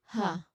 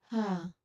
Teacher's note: So you make it by letting air flow freely from your lungs through an open mouth. So you create a soft, breathy sound. There's very little obstruction in your mouth. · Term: H sound